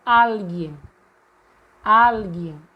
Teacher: E vejam que no espanhol, o al, está com um acento agudo. Ou seja, nós já vemos automaticamente que o al, no espanhol, é a sílaba tônica e não mais o gen, como no português.